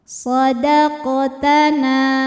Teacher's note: Huruf qaf dihukumi dengan qalqalah sughra, sebab huruf qalqalah sukunnya sukun asli dan ada di tengah bacaan. Maka qaf dipantulkan dengan pantulan yang kecil.